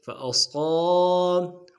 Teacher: صاد کو موٹا ادا کرتے ہوئے الف مدہ کے ساتھ ملانا ہے